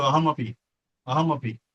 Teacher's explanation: कारण जेव्हा माणूस बोलतो त्यावेळेला तो सहज बोलून जातो अहमपि अहमपि. म्हणजे ते अहम आणि अपि हे बोलताना एकमेकात इतके मिसळून जातात की ते अहमपि होऊन जातं, ते म पूर्ण होऊन जातं. याचा उच्चार करतानाही आपण तो म पूर्ण करायचा, अहमपि. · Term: संधी